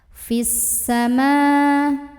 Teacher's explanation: Karena ada alif lam ta'rif yang bertemu dengan huruf syamsiyah yaitu huruf sin. Maka alif lam ini kita lewat aja, jangan dibaca, dari fi langsung masukkan ke sin. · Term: alif lam syamsiyah